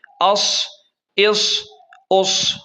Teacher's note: اب اسے جو ہے نا تیز پڑھیں گے، ہم انہیں تیز پڑھیں گے سیٹی کی طرح۔ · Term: سیٹی والے حروف